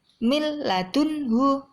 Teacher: sekarang yang nomor tiga idghom Bila Ghunnah arti kata idgham yaitu memasukkan Bila Ghunnah dengan tidak mendengung tidak usah mendengung